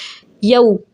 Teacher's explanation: ज़बर के बाद वाव साकिन है, वाउलीन कहलाएगा, जल्दी से और नरमी से पढ़ेंगे इसको